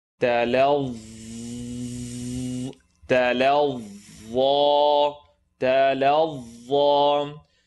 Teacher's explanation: Second part of your tongue is going to come out to the edge of the top teeth.